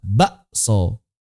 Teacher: K-nya diubah jadi hamzah.